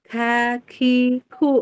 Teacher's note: Kaf dia tidak mantul karena dia mah bukan zahr dia hemes